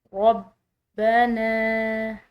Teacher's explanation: बा मुशद्दिद है तो दबाव से अदा करेंगे।